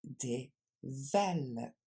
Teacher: Et l'accent tonique, deuxième mauvaise nouvelle, va tomber sur le V du milieu.